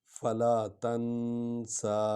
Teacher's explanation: نون کو تھوڑا سا لمبا کریں گے، جزم والی ہے